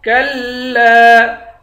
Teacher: اس الف پر مد ہے، اس مد کو 5 الف کی مقدار کھینچ کر پڑھتے ہیں